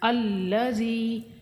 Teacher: لام مشدد ہے، تھوڑا رک کر اس کے ساتھ پڑھیں گے۔ الذی، زال کو نرمی سے پڑھیں گے اور زال حروف مدہ ہے، کھینچیں گے اس کو ایک الف کے برابر۔